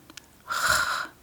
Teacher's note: It is a sound that comes from the back of the throat like so a [sighs and gasps] where in English it is [sighs] romance romance romantic [snorts] in Danish romantic ro and then I'm exaggerating a little bit rose Rose in English, rose. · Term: Danish R sound